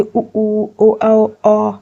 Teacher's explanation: अगर आप उच्चारण करेंगे खुद से तो आपके होंठ गोल गोल हो जाएंगे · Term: वृत्ताकार